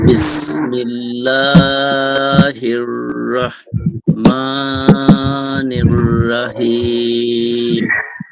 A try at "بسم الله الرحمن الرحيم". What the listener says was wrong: একটু রাহিম হয়ে যায়, রাহিম না, রহিম। রাহমানির রাহিম বলা যাবে না, রহমানির রহিম বলতে হবে।